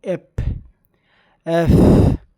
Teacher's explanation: দুই ঠোট মিলে আমরা উচ্চারণ করব এফ এফ বাতাস বেরবে